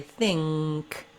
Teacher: It's not thin with a K. It's actually think with the back of my tongue lifting. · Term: NG sound